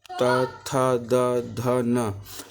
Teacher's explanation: ता वर्ग का उच्चारण दंत से होता है